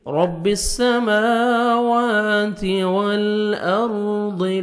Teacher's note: تا کو باریک پڑھیں گے